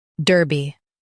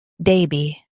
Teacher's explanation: In US, stress der. In UK, stress da.